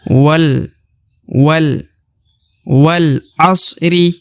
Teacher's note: Ya, jadi di sini perhatikan huruf alif tidak dibaca ya. Alif tidak dibaca karena huruf waw langsung masuk ke huruf lam. yang berharokat sukun.